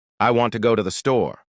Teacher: The words want go and store are stressed. The other words I to and the are much faster and softer.